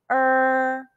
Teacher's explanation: it's close to the ur in the english word urban but curl the tongue further back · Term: final er